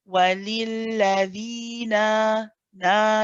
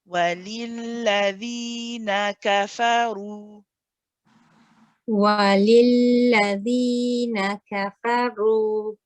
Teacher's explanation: we have 1 count for the noon, 1 count for the kaf, 1 count for the fa. So steady pace here.